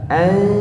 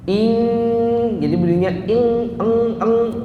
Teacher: An. Nah, ini kalau ketemu kaf atau ketemu qaf, samar-samarnya jadi berubah. Samarnya itu paling rendah. Ing, jadi bunyinya ing, eng, ya.